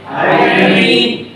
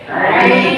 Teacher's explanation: ये दरमियान हलक से अदा होता है आइन